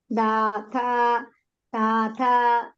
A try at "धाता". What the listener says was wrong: धा इज महाप्राण धाता